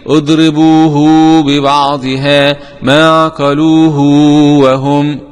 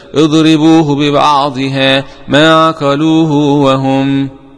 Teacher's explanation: قرأ ابن كثير بصلة الهاء بواو مادية